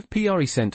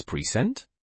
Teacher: The noun form has first syllable prominence. The verb form emphasizes the second.